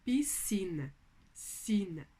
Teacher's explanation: Piscina, sina, é só o som de S que eu tenho aqui. Apesar de ser SC, eu não produzo o som do C. Logo, eu tenho um dígrafo.